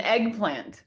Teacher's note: did you notice that eggplant is using set phrase intonation